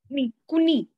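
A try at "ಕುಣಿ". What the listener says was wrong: Touch your tip of the tongue and onto the palate. No, it's not ni.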